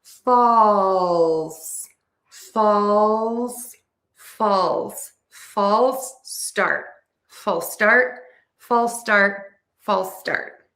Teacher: you are going to stress false, and then start is going to be unstressed. So the vowel in false needs to be really true, and that is a really wide, open, oval shape for that vowel.